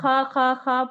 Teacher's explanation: ख तो देखिए आप गौर करिए पांच सात 10 बार अगर बोलेंग तो आपको खलने में एहसास होगा कि जबान जो है जबान का पिछला हिस्सा जो है वो ऊपर की तरफ उठ रहा है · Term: पुर हरूफ